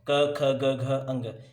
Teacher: कंठ्य वर्ण का मतलब हमारा कंठ यानी कि गला। अगर आप इन शब्दों को बोलकर देखोगे तो आपको लगेगा कि आपके गले में जोर पड़ रहा है, क्योंकि ये शब्द आपके कंठ से निकलते हैं। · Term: कंठ वर्ण